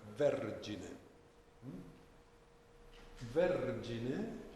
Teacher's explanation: Where is the tonic accent of vergine? Vergine is on ver, no?